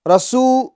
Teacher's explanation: سو میں واو مدہ ہے تو سین کو ہم کھینچیں گے ایک الف کی مقدار۔